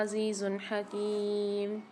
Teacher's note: عزیز حکیم میں دو پیش کی تنوین کے بعد ہا آ رہی ہے، اظہار ہلکی والا قاعدہ ہوگا، غنہ نہیں کریں گے